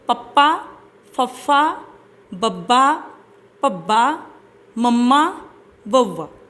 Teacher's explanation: ਜਦੋਂ ਆਪਾਂ ਇਹਨਾਂ ਵਿਅੰਜਨ ਧੁਨੀਆਂ ਨੂੰ ਬੋਲਦੇ ਹਾਂ ਤੇ ਸਾਡੇ ਬੁੱਲ ਜਿਹੜੇ ਆ ਉਹ ਕਦੀ ਖੁੱਲ੍ਹਦੇ ਆ ਤੇ ਕਦੀ ਜੁੜਦੇ ਆ।